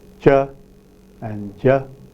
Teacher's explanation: palatoalveolar sounds produced by the front of the tongue plus rear part of the alveolar ridge